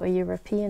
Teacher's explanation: even though a European is spelled with an e, you have a J sound which is a consonant sound